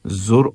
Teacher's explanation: را کو موٹا کرنا ہے